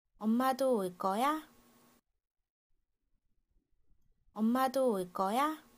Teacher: it sounds like the stress is on the second last syllable.